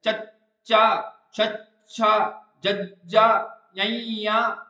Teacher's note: ਧੁਨੀਆਂ ਤਾਲਵੀ ਧੁਨੀਆਂ ਜਿਵੇਂ ਚਚਾ ਤਾਂ ਦੇਖੋ ਜਿਹੜੀ ਜੀਵ ਹੁੰਦੀ ਹੈ ਜੀਵ ਕੀ ਕਰਦੀ ਹੈ ਉਹ ਸਖਤ ਤਾਲੂ ਨਾਲ ਲੱਗ ਜਾਂਦੀ ਹੈ ਤੇ ਹਵਾ ਨੂੰ ਕੀ ਕਰ ਲੈਂਦੀ ਹ ਰੋਕ ਲੈਂਦੀ ਹੈ। ਚਚਾ